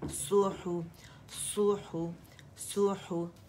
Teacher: صاد جو ہے اس میں اطباق ہے، زبان تالو سے لپٹی ہوئی ہے